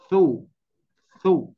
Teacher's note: Sifatnya hamas, udaranya mengalir, ya, udaranya mengalir keluar, dan juga sifatnya rohwah, yaitu mengalirnya suara, ya. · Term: sifatnya Hames